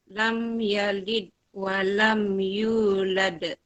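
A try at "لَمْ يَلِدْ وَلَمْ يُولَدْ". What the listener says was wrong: Nah, yang ini tadi tidak lantun. Lam yalid wa lam yulad.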